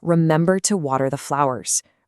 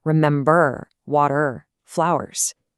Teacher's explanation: the American accent also keeps that R sound really strong at the end of words that end in R. Unlike some other English accents, we don't drop it. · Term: colored R